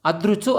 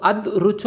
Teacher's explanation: అదృచు అన్నప్పుడు అద్ ఋచు అని పలకం అదృ అని పలుకుతాం ఊది పలకబడవు కాబట్టి అదృచు విద్రుచు మొదలైనవన్నీ కూడా సంయుక్తాక్షరానికి ముందున్నవి లఘువులే అవుతాయి